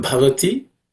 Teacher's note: The last word Bhavati, the first letter Bha is aspirated.